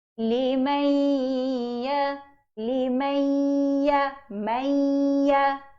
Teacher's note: Kena tekan pada ya sebab kita kena pinjamkan tanda sabdu tu. Itu idgham.